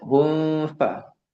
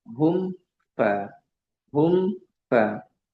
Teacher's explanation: Mim sukun ini tidak apa tidak dilama-lamakan ketika bertemu dengan fa. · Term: izhar syafawi